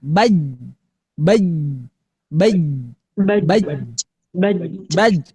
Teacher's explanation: secara makhraj dia satu jahar, dua syiddah tertahan. Baj. Belum dipantulkan.